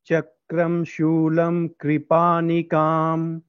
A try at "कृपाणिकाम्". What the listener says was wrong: It's not kri. Kri means choti iki matra, right? So it is hrasva e sound, right? Here it is not kri, kr, kripanikam.